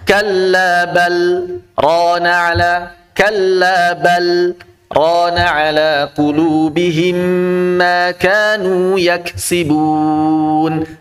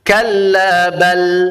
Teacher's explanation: Kallabal, berhenti sejenak, jangan nafas. Kurang lebih ditahan 2 harakat. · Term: saktah